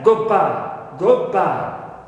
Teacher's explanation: the D turns into B because that is influenced by the following sound B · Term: da turns into ba